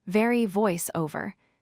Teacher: The V is a voiced sound, which means your vocal cords vibrate when you make it. To pronounce V correctly, place your upper teeth on your lower lip and then blow air out.